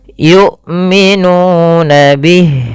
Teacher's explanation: hamzah ini tidak boleh nyeret matinya, harus jelas suaranya, yang dimana hamzah punya sifat namanya jahar dengan, ya, jahar dengan syiddah.